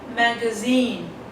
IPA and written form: ˌmæɡəˈziːn (magazine)